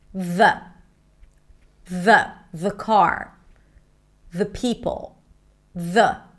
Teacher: the tongue comes out. You hear the vibrations. The Now, with this word in particular, sometimes you can cheat and put the tongue on the back of the teeth. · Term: voice th